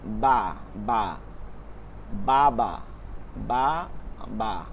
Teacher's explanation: বা ঠোঁটের ভিজায় মানে ভিজা জায়গা থেকে